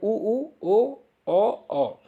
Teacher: जब आप इसका उच्चारण करते हैं तो आपका जो ओठ होता है वो वृत्त के आकार का मुड़ जाता है। बाकी जितने सारे बनेंगे वो आवृत्तामुखी बनेंगे।